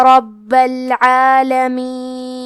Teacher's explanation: کلمت رب میں را کو موٹی آواز میں پڑھیں گے کیونکہ اس پہ زبر ہے، با پہ تشدید ہے تو ہمیں 2 حرف کے برابر با کو پڑھنا ہے